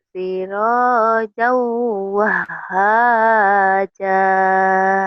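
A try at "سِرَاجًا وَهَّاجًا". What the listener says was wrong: Cuman kurang nyamber aja. Wah haja. Wah. Disentak kayak gitu. Kayak membel gitu.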